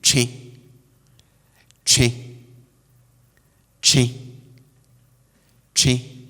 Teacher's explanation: you can tell that I'm pronouncing this with some sort of nasal effect